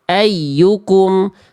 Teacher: Ya tasdid di sini yang ayyukum jangan ditahan, bukan idgham bigunah tapi nabar.